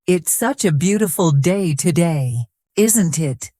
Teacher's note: Did you notice the intonation at the end? It rises slightly, making the sentence sound friendly.